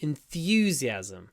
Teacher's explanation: Enthusiastic. And in the noun, the stress is on the u.